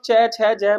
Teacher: स्पर्श संघर्षी दोनों को मिलाकर एक वर्ण बनाया है